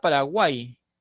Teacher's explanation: la Y no está fonando como consonante, está fonando como vocal I. Y por ese motivo es que lo puedo contar como un triptongo, ¿sí?